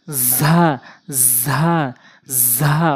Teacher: এরপর হচ্ছে ঝা ঝা ঝা অর্থাৎ জিহ্বার আগা উপরে নিচে দুই দাঁতের মাঝখান, জিহ্বার আগাটে নিয়ে উপরে নিচে দুইটি দাঁতের মাঝখানে লাগাবেন